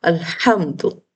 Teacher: حمزہ وصل کو ہم نے لام ساکن کے ساتھ ملا کے پڑھا